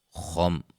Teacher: خا کو موٹا میم ساکن کا اظہار